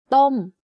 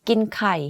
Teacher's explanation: My pitch goes up and slightly down by the time I finish saying the word. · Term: falling tone